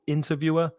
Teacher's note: And also there's changing stress in the next 2 words, interviewer, stress the first syllable